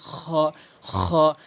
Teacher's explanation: খ হলকের শেষ থেকে উচ্চারণ হয়